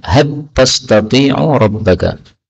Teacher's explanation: lam ketemu ta dalam qiraah Kisai diidghamkan. Had, lamnya jadi ta, ya.